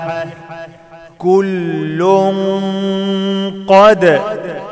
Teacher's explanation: تنوينه بعد قاف إخفاء مع الغنة، وفخم الغنة علشان القاف مفخمة